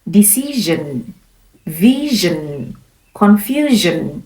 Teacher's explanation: So, when a voice sound precedes s i o n, pronounce it as zhun.